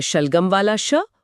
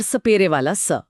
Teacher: श एक तालव्य ध्वनि है जहां जीभ मुड़कर मुंह की छत को छूती है। जबकि स एक दंतीय ध्वनि है जहां जीभ दांतों के ठीक पीछे आती है